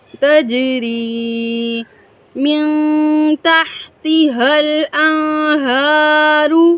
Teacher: نون ساکن کے بعد حروف ہلکی میں سے کوئی بھی حرف آیا ہے تو یہاں پر غنہ نہیں ہوگا